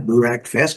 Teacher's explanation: Então a primeira sílaba é a sílaba forte, breakfast. A letra A não é pronunciada e o E com o som do nosso E do português.